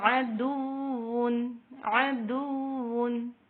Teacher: بعض لوگ واو پہ غنہ کرتے ہیں، جب ملاتے ہیں تو یہاں پہ ادغام کرتے ہیں، لیکن یہاں پہ ادغام نہیں ہوگا کیونکہ یہاں پہ نہ ساکن آ رہا نہ تنوین آ رہی ہے، یہاں پہ صرف پیش آ رہا دال کے اوپر، تو یہاں پہ ناک میں ساؤنڈ نہیں جانا چاہیے